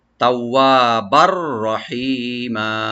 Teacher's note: আর বারবার যে তানভিন আছে, তানভিনের পরে যেহেতু রা আসছে এখানে, এদগামের অক্ষর একটা, তো এখানে আমরা এদগাম করব, সংযোগ করব, কিন্তু গুন্না হবে না, এখানে গুন্না ছাড়া আমরা সংযোগ করবো তার সাথে।